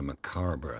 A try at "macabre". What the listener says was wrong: I believe it's pronounced macabre. Macabre. You threw an extra R in there, dude.